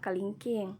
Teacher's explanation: bunyi depannya itu tinggi, terbuka, dan tidak bulat